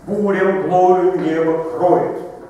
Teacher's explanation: На хореи мы ждали ударения каждый первый слог